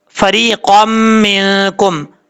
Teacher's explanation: قاف کو جب میم سے کنیکٹ کریں گے تو بیچ میں الف ہے، اس کو چھوڑ دیں گے، یہاں پہ ادغام یرملون ہوگا، ایک الف کی مقدار غنہ کیا جائے گا، قاف حروف مستعلیٰ میں سے ہے، پر پڑھیں گے، میم نون زیر من، کاف میم پیش کم، من کم۔